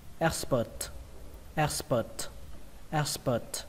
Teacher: Và âm thứ hai là âm ơ các bạn nhé, nó xuống giọng